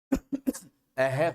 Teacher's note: जब हम विसर्ग का उच्चारण करते हैं तो हमारी स्वर तंत्रियां हैं उनमें किसी प्रकार का कोई कंपन नहीं पाया जाता है। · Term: अघोष ध्वनि